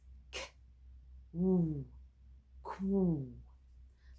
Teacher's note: some people say a K and a W welded together. So, if a W sound is "w", that's the sound we need to end on.